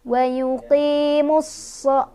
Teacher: alif ini nggak dibaca, lamnya juga nggak dibaca. Jadi kita langsung tekan ke shad ya. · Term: idgham syamsiyah